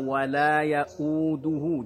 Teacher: Ini potongan yang terakhirnya, wala yauduhu, bulatkan bunyi dhammahnya, wala yauduhu, jangan wala yauduhu, tapi wala yauduhu ya.